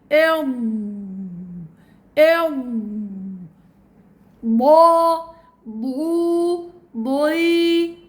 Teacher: جريان تام للصوت، امتداد الصوت من آخر حافة اللسان إلى أولها · ودائما طبعا حرف الضاد مفخم، تفخيمه حيكون بالتجويف الفموي نتيجة ارتفاع أقصى اللسان ووسط اللسان إلى الحنك الأعلى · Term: الاستطالة